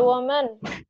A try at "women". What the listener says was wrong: Bacanya bukan woman, women. Woman yang pakai an.